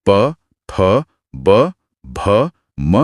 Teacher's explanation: जब दोनों होठ आपस में मिलते हैं तब प वर्ग यानी प फ ब भ म की ध्वनियां उत्पन्न होती हैं। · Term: ओष्ठय